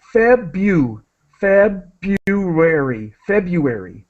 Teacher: we do not pronounce the R so feu feary February the r is silent and so what